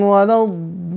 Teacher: mad tabi'i bertemu huruf bertasydid, maka dibacanya harus panjang, nggak boleh kurang dari 6 harokat. Dan juga nggak boleh lebih gitu ya. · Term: mad lazim kilmi mutsaqal